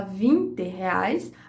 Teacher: a gente tem um e mais claro e aberto